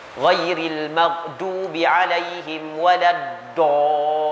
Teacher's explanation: Wadhadu min hafatihi idhwaliya nadrasa min aisara au yumnaha. Dha' ni adalah min hafatihi, daripada tepi lidah.